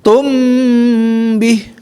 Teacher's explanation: mim huruf asyafatain, ba juga huruf asyafatain, maka tahan di situ ya. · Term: Ikhfa syafawi